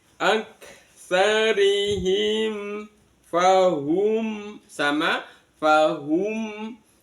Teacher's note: Mim sukun bertemu dengan lam alif. Mimnya dibaca izhar syafawi jelas di bibir